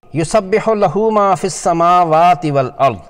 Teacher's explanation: ہا پر الٹا پیش واو مدہ کے قائم مقام ہونے کی وجہ سے 2 حرکات کھینچ کر پڑھا جائے گا